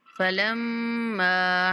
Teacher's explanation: میم پر غنہ کرتے ہوئے کھینچیں گے